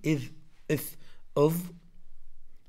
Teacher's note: ثم الذال والضاء والثاء نفس الشيء، إذ إث أض، كلها من تأتي من رأس اللسان